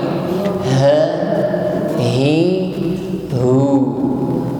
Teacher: diucapkan dengan suara yang mantap ya, keluar dari makhraj aqsal halqi, ha, hi, hu, namun tidak terlalu ditekan, ha, hi, hu, tidak. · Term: huruf ha